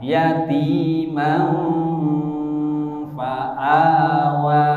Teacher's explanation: membacanya dengung dengan samar dan sabar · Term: ikhfa hakiki